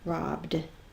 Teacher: is a voiced consonant so the ed is going to have the d sound